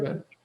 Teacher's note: If you say mirror, you stress the first syllable, right?